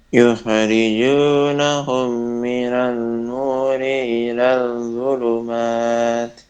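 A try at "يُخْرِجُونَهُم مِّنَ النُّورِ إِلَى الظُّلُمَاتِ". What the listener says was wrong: Dengungnya gak ada tadi. Mim dan nun kalau tasydid didengungkan yang lama.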